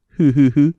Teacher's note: the japanese don't bite their bottom lips as we do when we say the sound so let your upper teeth just barely touch your lower lips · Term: f